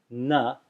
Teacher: it's pronounced as just like the dental nasal na, with the tongue touching the back of the teeth, na. And the reason is because the following letter is a sa, sta, as in the word sta, and sa, it turns out, is dental.